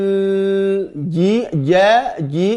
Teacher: jim dari tengah, lidah bagian tengah